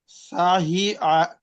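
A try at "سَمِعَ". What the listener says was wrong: সা, আচ্ছা এটা হচ্ছে মিম ভাই, এটা মিম, ঠিক আছে?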